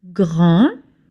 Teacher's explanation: You don't pronounce the D at the end. It's a silent letter.